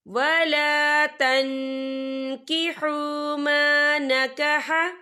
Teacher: वला तन्किहु मा नकह, या देखें वला तन, या नून साकिन है, नून साकिन के बाद जो है कैफ आ रहा है और कैफ जो है इक्फा का वर्ड है, तो हम यहाँ इक्फा करेंगे, नून साकिन की आवाज को नाक में छुपाएंगे।